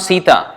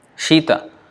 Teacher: That is Sita, dental sibilant. But Shita means from the palatal sibilant.